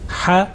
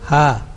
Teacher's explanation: the sharp one and also that ha which is blunt, you know, bottom of throat